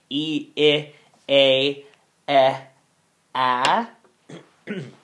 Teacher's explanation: we have our front vowels from high to low